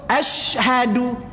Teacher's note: Enggak boleh di situ dimanyunkan karena baris sinnya sukun, baris mati.